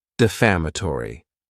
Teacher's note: Next is the word defamatory. And this word has five syllables and the stress is on that second syllable. Defamatory.